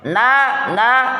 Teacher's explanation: bersamaan dengan keluarnya suara masukkan pula suara itu ke dalam pangkal hidung